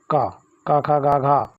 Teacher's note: का वर्ग जो होता है वो कंठ कहलाता है